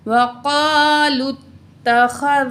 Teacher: ख़ा को भी हम मोटा पढ़ेंगे, ज़ाल को नरमी के साथ अदा करेंगे और लाम तशदीद से मिलाएंगे।